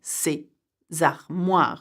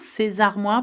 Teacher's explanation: we make the liaison between ces and armoire, ces armoires, because armoire begins with a vowel